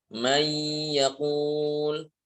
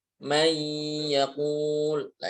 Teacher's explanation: Ini sudah nunnya gak ada sama sekali dan disertai dengan ghunah dua harakat. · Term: idgham bighunah